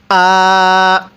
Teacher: এই হামজা এর মধ্যে আমরা এক আলিফ টান দিব